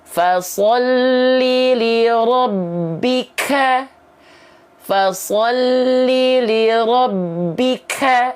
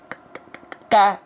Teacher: naturalnya huruf k itu ada percikan nafas gitu